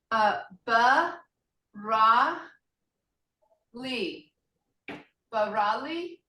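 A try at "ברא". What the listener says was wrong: Yes. Yes. That's very good.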